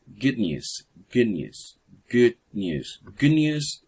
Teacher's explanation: when you listen the sound at the end of good it's not pronounced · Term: Co articulation, overlapping sound